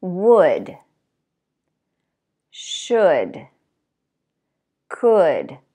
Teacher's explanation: All of those words have the same vowel and the L is silent